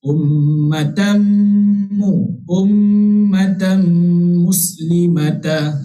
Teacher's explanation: Okey, mana-mana nun mati ataupun tanwin bertemu dengan 4 huruf ini, otomatik dia dinamakan idgham ma'al gunnah. Okey, kita kena dengung sebanyak 2 harakat ma'al gunnah berserta kita idgham itu maksudnya memasukkan berserta dengung. Okey, daripada huruf ta marbutah itu terus baca huruf mim.